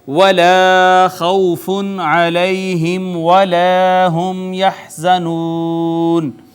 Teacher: یہاں یہ الف مدہ ہے، واو کا ما قبل مفتو، واو لین، نون تنوین کے بعد حرف اظہار، لہٰذا یہاں پہ اظہار، یا کا ما قبل مفتو، یا لین، میم ساکن پہ اظہار شفوی، پھر الف مدہ، میم ساکن پہ پھر اظہار شفوی، اور پھر واو مدہ، حرف مدہ کے بعد سکون عارضی، لہٰذا مد عارض بھی یہاں پہ ہوگی